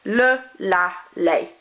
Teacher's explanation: We don't pronounce that S on the end.